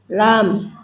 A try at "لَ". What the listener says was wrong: Enggak pakai lam, langsung ya la.